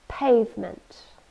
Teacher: two syllables and we stress the first one